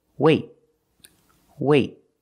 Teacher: have a vowel then we do a stop T that means you put your tongue up in the T position but you don't release example wait wait I don't say weight I don't release the · I don't release the T it's a stop T I stop the air I stopped the air with my tongue